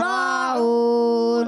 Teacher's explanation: را پر کھڑا زبر پڑھیں گے، را کو موٹا بھی پڑھیں گے، کھینچیں گے بھی، عین واو پیش عو واو مدہ، اور جب وقف کریں گے ہو جائے گا مد عارض.